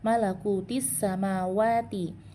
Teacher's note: Di sini ada alif lam alif lam atau lam takrif bertemu dengan huruf sin. Ya, jadi huruf lamnya itu tidak dibaca atau diidghamkan sempurna ke dalam huruf sin. Namanya nama hukumnya adalah idgham syamsi atau alif lam syamsiyah.